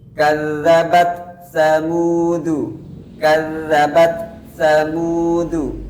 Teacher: Jadi pada kalimat kadzabat terdapat ta sukun dan harus kita munculkan hamsnya.